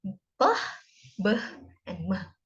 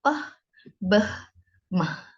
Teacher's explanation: We can make or produce sounds b, b, and m. So our lips, both upper and lower, they touch each other. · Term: bilabial sounds